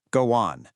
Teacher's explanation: So instead of an awkward robotic pause, a phrase like go on naturally gets a little hidden W sound inserted. It becomes go on. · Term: linking